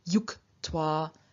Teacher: And of yuj, to join or to link, we have even more of a change happening. The j loses its voice in front of the unvoiced T